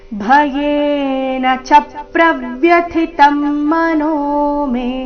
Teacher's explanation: ಚರಣದ ಕೊನೆಗೆ ಮೇ ದೀರ್ಘ